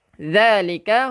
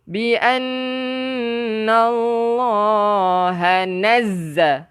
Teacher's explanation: zal hujung lidah keluarkan. Kalau zai, kita kacipkan gigi.